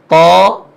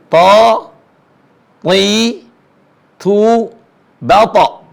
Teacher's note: ujung lisan ketemu dengan gusi gigi seri atas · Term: huruf th